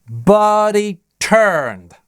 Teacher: But he это местоимение. Слабая часть речи, оно редуцируется и прилипает к предыдущему слову, теряя h.